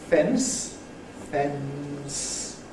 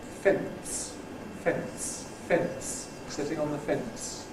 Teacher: ‘Plosive epenthesis’ This is something I don't do, but my students overwhelmingly do. When you have a nasal followed by a voiceless fricative, people tend to intrude a voiceless plosive. So where I say ‘fence’ [ fens ], [ fens ], [ n ] and [ s ], people instead say [ fents ], ‘sitting on the fence’ [ fents].